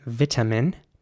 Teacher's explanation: And in British English, it would be pronounced vitamin. Vitamin with an E sound for the I there at the beginning, vitamin. And a very strong T sound, vitamin. In American English, the I at the beginning would be pronounced like an I, so vitamin.